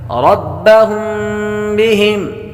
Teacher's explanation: میم ساکن کے بعد با آرد غنہ کریں گے